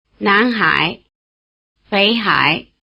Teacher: Before the low tone of hǎi, the low tone of Běi becomes a rising tone, indistinguishable from the rising tone of Nán